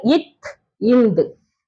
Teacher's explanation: இத்துந்து எப்படி பிறக்கின்றது ஒளிச்சு பாருங்க இத் இந்து மேல்வாய் பல்லின் அடிய வந்து நாக்கின் நுனி பகுதி பொருந்துவதால் பிறக்கின்றது